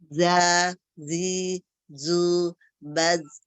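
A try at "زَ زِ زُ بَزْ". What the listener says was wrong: Za, zi, zu, baz. Jangan berubah. Itu antara fathah, kasrah sama doma beda itu. Makhrajnya. Ya, yang beda tuh ismamul harokahnya aja, tapi sofirnya sedikit lagi. Baz. Za, zi, zu, baz. Baz. Ah, ya, mahrotnya belum ketemu pas.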